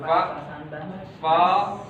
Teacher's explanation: ini gigi atas ke bibir bawah huruf fa